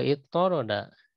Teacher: Jadi digabung ya karena dua huruf to bertemu jadi dileburkan ya, ditadibkan atau diidghamkan